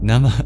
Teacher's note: at the end of the word Nama, we have a H with a dot under it. That indicates an expulsion of breath